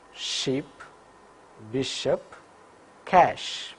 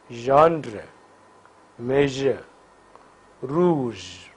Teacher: Vocal cords vibrate for j, do not vibrate for sh. Sh is voiceless palatoalveolar fricative, while j is voiced palatoalveolar fricative.